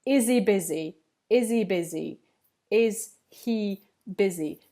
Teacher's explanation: the H sound disappears off he and then there's linking between the sounding is and the vowel